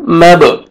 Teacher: با پہ قلقلہ کریں گے، ڈبل ساؤنڈ آئے گا